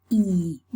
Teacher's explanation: When we say E, the tongue is very high, close to the hard palate, and the lips assume a special position. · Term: the fleece